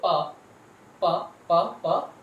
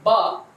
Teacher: If you produce ba, then the vocal cord will vibrate. So these are called as voice sounds. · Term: voiced consonants